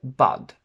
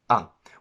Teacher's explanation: a word the word bud contains the sound ah which is a short open mid back unrounded vowel meaning that your mouth is fairly open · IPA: /ʌ/